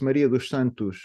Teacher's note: this s in the end never sounds like the s in English it's it's a s it's a kind of a sh sound right s it's like a a j without the the part